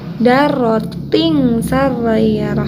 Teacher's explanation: Ini wa may ya'mal misqala dzarratin sarrayarah. Ada tanwin bertemu dengan huruf shin ya, dibacanya harus ang ya.